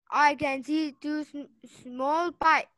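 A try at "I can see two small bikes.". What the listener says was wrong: Bike, مش pike. I can see bike.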